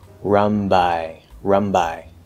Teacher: make that N into an M, a very fast M, okay? And then immediately push out the B. So we don't actually have to close into the N and then do the B, right?